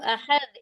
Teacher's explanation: जी, जो छोटी हा का मखरज है वही हमजा का भी मखरज है। हमजा हलक के आखिरी सीने की तरफ वाले हिस्से से अदा होता है।